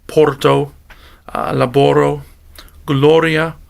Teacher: the letter R is actually not much different but it was actually trilled by the Romans